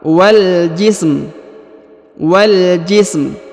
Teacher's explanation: Huruf mimnya dibaca suara rendah atau suara tipis ya, karena sebelumnya berharokat sukun.